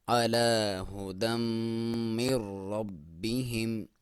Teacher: با کو تھوڑا دبا کے پڑھیں گے کیونکہ اس کے اوپر شد ہے۔ ہا کو کلیئر، اور میم کے ساتھ میم ساکن ہے۔